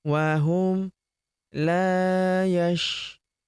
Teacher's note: Huruf la kita panjangkan dua harakat karena terdapat tanda alif di depannya